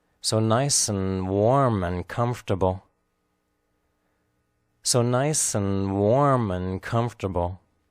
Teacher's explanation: the important content words nice warm comfortable which are clearly pronounced so and and/or unstressed spoken lightly